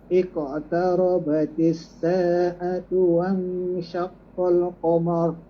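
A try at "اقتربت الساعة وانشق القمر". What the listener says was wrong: Qamar tu boleh qamar. Mim tu nipis jangan qamar.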